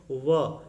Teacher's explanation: इसका सूत्र है वकारस्य दंतोष्ठम, यानी व का उच्चारण स्थान दंत और ओष्ठ दोनों होता है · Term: दंत ओष्ठ